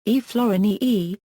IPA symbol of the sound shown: ʃːː